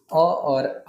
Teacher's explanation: कंठ में याद रखेंगे अ और आ का उच्चारण होता है